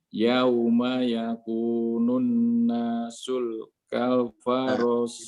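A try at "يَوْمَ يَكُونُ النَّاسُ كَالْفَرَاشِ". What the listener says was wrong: Tidak ada lam. Tidak ada lam. Nasukal. Langsung masuk nasukal.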